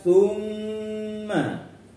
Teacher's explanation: Ketika ada nun atau mim yang bertasydid, maka itu contoh dari ghunnah musyaddadah. Dengung, panjang dengungnya bisa 2 bisa 3, ya.